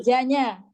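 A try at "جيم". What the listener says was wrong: Jim. Hurufnya jim ya, bukan ja ya. jim.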